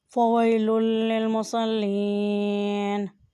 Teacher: لام کے نیچے زیر ہے اور ساتھ یا ہے، اس لیے اسے بھی مد کریں۔ اور یہاں فوئی، واؤ کے اوپر زبر اور ساتھ یا ہے، یہ حرف لین ہے، اس لیے اسے آواز کو کھول کر ادا کریں۔